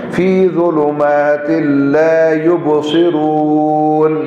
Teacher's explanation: فی ظلمات میں نون تنوین کے بعد لام آگے یرملون کا, تو یہاں ادغام ہو جائے گا, غنہ نہیں ہوگا